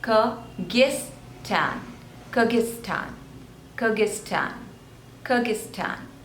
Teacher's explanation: there are three syllables the stress is on the second one